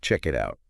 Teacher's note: the letter T sound at the end of the word, it glues directly onto the beginning vowel sound of the word out. Everything hooks together, so the speaker doesn't have to stop their breath. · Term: vocal glue